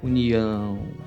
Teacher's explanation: o som precisa sair uma parte pelo nariz